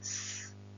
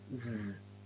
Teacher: We mention voicing, place of articulation, and manner of articulation. S is a voiceless alveolar fricative, and z is a voiced alveolar fricative.